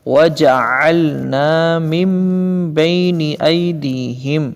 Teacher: عین درمیان حلق سے ادا کرنا ہے